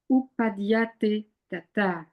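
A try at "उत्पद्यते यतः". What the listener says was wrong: Be more emphatic with the length, the longs and the shorts. did detect a little bit of la phonétique du français creeping in there, you see. So utpadyate yata. The way these longs and the shorts can, from the phonetics of our native languages, I mean, a native French speaker, it will distort it one way, native English speakers, it distorts it slightly another way.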